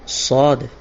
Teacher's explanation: صاد زبان کی نوک اور سامنے کے اوپر نیچے کے 2 دانتوں کے کنارے سے ادا ہوتا ہے۔